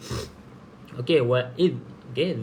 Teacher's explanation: Za ni bukan huruf qalqalah, maka kita hati-hati supaya tidak melantunkan pada huruf za mati.